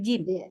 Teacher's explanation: Karena huruf jim wajib dia tidak boleh terhembus udara.